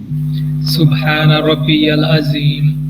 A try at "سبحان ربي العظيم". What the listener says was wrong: ربی کو آپ لمبا کر رہے ہیں, ربی العظیم نہیں ہوگا. ربی یہاں پہ 3 ساؤنڈ ہیں, را با یا.